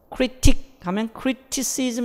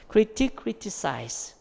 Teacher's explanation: 어쨌든 E나 I 앞에서 스로 변한다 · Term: 필라소프트닝